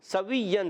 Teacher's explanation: سین کو سیٹی کے ساتھ باریک ادا کریں گے، واؤ کو یا سے ملانا ہے۔